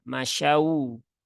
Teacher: masyau Fi masyaufi Nah itu ee enggak tepat ya Enggak tepat Jadi bukan O ya tetapi bunyinya adalah u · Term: wau sukun